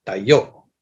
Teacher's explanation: it's a glottal stop, and it's accented on the second syllable.